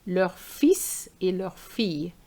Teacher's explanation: So you have to remember to pronounce the S after fil, okay, because we are talking about the son.